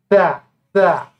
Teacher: Jadi lidah kita di ujung lidah, ha, ya. Ujung lidah menyentuh gigi seri kita bagian depan.